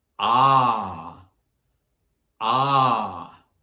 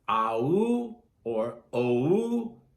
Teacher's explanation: Notice it's just one sound, not AU or OU, just ah.